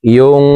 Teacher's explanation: নুন সাকিনের পর ইকফার হরফ ফা আসছে, এই কারণে এই নুন সাকিনকে নাকের ভিতরে লুকাইয়া গুন্নার সহিত পড়ব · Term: ইকফা গুন্না